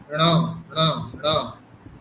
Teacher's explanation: সেরকমই ঞ ঞ, এটা তালুর সাথে নাক, ঞ ঞ। তারপর মূর্ধার সাথে নাক